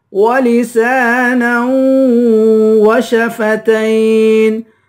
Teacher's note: نون کو واو سے ملا کر نون پر غنہ کریں گے